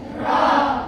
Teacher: Lam dan ro ini berada di ujung lidah.